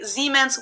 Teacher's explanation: bavarian dialects for example would say siemens with a voiceless s